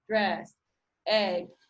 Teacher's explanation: e in dress occurs more in a mid position or to mid low position